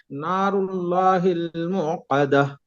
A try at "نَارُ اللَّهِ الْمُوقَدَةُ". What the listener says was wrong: موقدة. आइन की आवाज नहीं आना चाहिए, मुंह इस तरह नहीं, मुकदा.